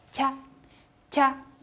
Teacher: ，然后注意这个和汉语拼音的▁cha▁是不一样的， 不一样的地方是在舌头的位置上，是放在前颚的地方